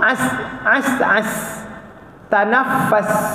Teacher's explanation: sin dia angin dan dia rakhawah bergerak